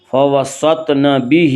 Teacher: زبر، کھڑی زیر قائم مقام ہے یا مدہ کے، اس لیے کھڑی زیر کو ایک الف کے برابر کھینچ کر پڑھیں گے